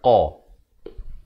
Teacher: Qa ni makhrajnya di pangkal lidah kita ini